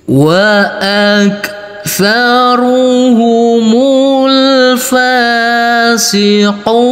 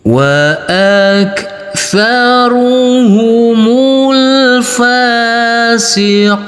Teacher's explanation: kita lanjutkan untuk yang 6 harokat. Kita kasih irama nada turun.